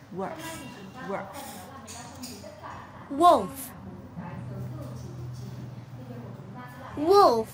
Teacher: Răng trên chạm môi dưới thở gió giống chữ phờ đúng không?